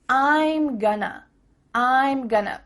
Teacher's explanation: those reductions we talked about at the beginning of this lesson we have a contraction I am and then we're reducing going to to become gonna